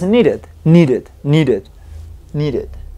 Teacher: no es ni id, ni es ed, es exactamente un intermedio entre los dos. Insisto bastante, tengan mucho cuidado con esa pronunciación de esa i, que nosotros en el español no la tenemos y es simplemente una i muy rápida o una e muy rápida.